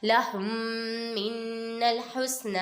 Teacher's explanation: ادھر میم ساکن کے بعد دوسری میم آ رہی ہے، ادھر ادغام شفیع ہوگا، ادھر گنہ کر کے پڑھیں گے